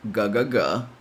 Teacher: the sound is produced with the back of the tongue touching the soft palate, which is that soft part in the roof of your mouth. This G sound is followed by an E sound, the same E we see in words such as red.